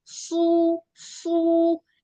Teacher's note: इसमें जुबान के जो पीछे वाला हिस्सा है ना वो भी उठ जाता है सु ठीक है और अगर आप सीन से कहेंगे तो वो सु निकलेगा।